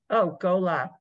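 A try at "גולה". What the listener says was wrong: 3 diagonal is what? No, it's an ooh, like in the word blue. gula, like almost like goulash. Is ooh.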